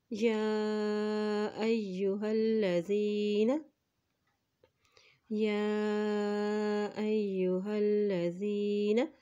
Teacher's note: یا کے اوپر کھڑی زبر بھی ہے اور مد بھی ہے، اس لیے اس کو لمبا ادا کریں گے